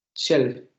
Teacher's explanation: Primero sería la aproximante lateral y ya después la fricativa labiodental.